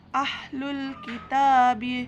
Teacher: Alif Lam Qomariah karena huruf alif lam bertemu huruf Kaf dibaca secara jelas kemudian Mad asli atau Mad Thobi'i karena huruf tak berharakat fathah